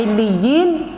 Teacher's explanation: kita kena baca dia huruf lam itu tawasut dia. Maksud dia dia di tengah-tengah antara syiddah dan rukhawah.